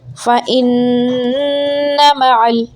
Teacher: نون کو جلدی سے بول کے میم بولنا ہے۔ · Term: غنہ